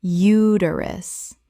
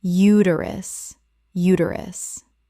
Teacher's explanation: The stress is on the first syllable and the middle syllable is reduced.